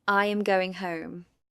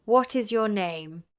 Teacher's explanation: Falling intonation is used for statements, commands, and which questions. The pitch falls at the end of the sentence.